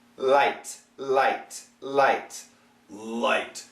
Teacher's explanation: The light L, what happens is these are your upper teeth, these are your lower teeth, and the tongue tends to touch more on the alveolar ridge, especially a little bit on the lower side